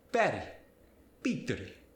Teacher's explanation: the V sound in Spanish gets the B sound. So in English, when you get words like very or victory, it sounds like Very.